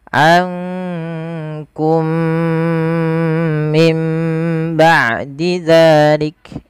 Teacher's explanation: Maka di sini diwarnai dengan warna hijau, menandakan dia huruf mim yang pertama dimasukkan kepada mim yang kedua dan ditahan dengan 2 harokat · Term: idgham mimi